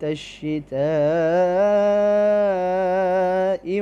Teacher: 5 الف کی مقدار اس کو لمبا کر کے پڑھیں گے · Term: مد واجب متصل